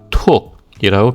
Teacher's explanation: 그리고 1성에서 장모음의 목이 닫히는 소리는 길게 떨어뜨리고 단모음의 목이 닫히는 소리는 짧게 떨어뜨리면 되겠죠. 자, 예를 들어서 싸다는 단어의 톡은 장모음의 목이 닫히는 받침이 왔죠. 그래서 톡이라고 길게 떨어뜨리면 됩니다.